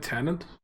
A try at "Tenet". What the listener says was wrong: No, it's not Tenant. Tenet. No, you said Tenant. You said Tenant. You said you put the N in there.